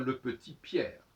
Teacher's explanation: quand je dis le petit Pierre, on n'entend pas le T de petit Pierre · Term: liaison